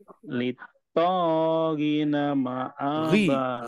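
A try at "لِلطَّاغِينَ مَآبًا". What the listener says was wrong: Ri panjang. Ayunan, di sini ayunan. Dipraktekkan ayunan, Pak. Biar kebayang polanya. Litaghina ma'aba. Ri-nya kurang ayun. Di sini ada ayunan.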